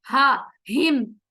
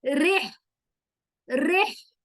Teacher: जो हिम, इलाफी हिम में हा है, वो हलक के आखिरी वाले हिस्से से अदा होगा, हा हिम। रिह में जो हा है वो हलक के बीच से अदा होगा